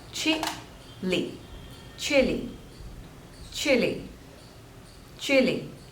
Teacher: there are two syllables and stress is on the first one